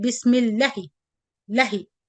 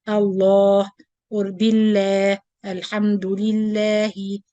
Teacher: you notice that I stretch the lam two vowel counts. When we say basmala or isti'adha, we say bismillahi. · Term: natural mad